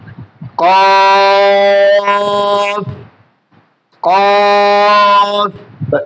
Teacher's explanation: উচ্চারণটা হবে মৃদু মোটা, কফ কফ। হরফের মাখরাজ হচ্ছে জিহ্বার গোড়া তার বরাবর উপরে তালুতে লেগে দিতে হবে